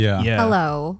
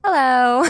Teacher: people from NorCal tend to end their sentences like downwards